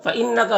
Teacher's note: فَإِنَّكَ، نون مشدد غنہ ہوگا